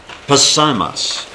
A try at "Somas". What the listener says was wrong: I think the P is silent.